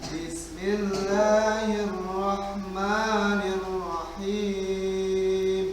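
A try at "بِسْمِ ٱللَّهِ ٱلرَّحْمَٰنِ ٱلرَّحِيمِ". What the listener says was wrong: Ya, dibalik tadi anu jim teh naikna tadi teh. Jadi jim teh nu naikna, ya anu him teh nu turun gitu. Ieu mah dibalik antum.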